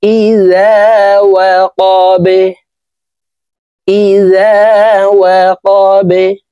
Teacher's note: কলকলার হরফ নিচের দিকে ধাবিত করে ধাক্কা দিয়ে এই বাকে সাকিন করে ফেলতে হবে।